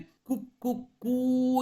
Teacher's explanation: ಆ ಮೂರನೆಯ ಕೂನಲ್ಲಿ ಇರುವಂತಹ ದೀರ್ಘ ಸ್ವರ ಇದೆಯಲ್ಲ, ಅದನ್ನ ಆತ ಪ್ಲುತ ಸ್ವರ ಎಂದು ಕರೆಯುತ್ತಾನೆ